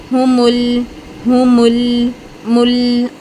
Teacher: آپ جب لام ادا کریں گے نا تو آپ کی جو زبان ہے یہ پورے 8 دانتوں کے پیچھے پھیلے گی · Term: لام ساکن